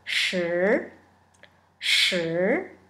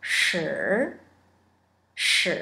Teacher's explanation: Here, number 10 is shi, shi, with an er sound in the end